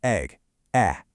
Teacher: For E, it's a slight smile. Your jaw drops just a bit for egg.